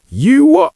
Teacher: Notice how I stressed what, and I pronounced you with a weak form. You what? And many Brits will use the glottal stop at the end instead of a T.